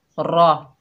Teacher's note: रॉ के ऊपर ज़बर है, रॉ को पूर पढ़ेंगे